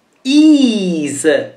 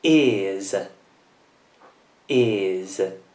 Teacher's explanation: Quindi la vocale è sempre dolce e quindi si pronuncia con una Z.